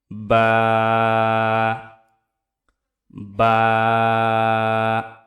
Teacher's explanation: দুই ঠোটের যে ভিজা অংশ সেই ভিজা অংশ থেকে উচ্চারিত হবে